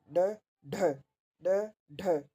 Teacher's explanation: उसके बाद है उत्क्षिप्त, जिनके उच्चारण में जीवा की नोक झटके से नीचे गिरती है तो वह उत्क्षिपित, फेंका हुआ या फिर ध्वनि कहलाती है।